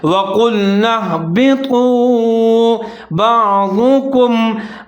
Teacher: قاف کو موٹا پڑھنا ہے، آگے طا کو موٹا پڑھنا ہے